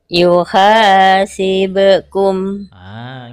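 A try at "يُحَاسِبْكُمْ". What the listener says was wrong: Bukan bekum tapi be. Yuhasibukum.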